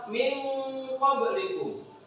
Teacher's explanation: Di saat kita mengucapkan min, kita sudah siap kepada mafrodnya huruf qaf. Jadi min, kemudian kita siap di qafnya. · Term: ikhfa